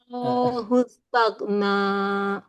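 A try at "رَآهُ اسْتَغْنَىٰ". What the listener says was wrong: enggak, kalau kalau ini a-nya jadi bukan bukan bukan mat untuk ro, tapi dia berdiri sendiri. Aro hustagna. Ah, A-nya dua, A-nya dua. Dia dia Matabi. Ar-ra'ahu istaghna.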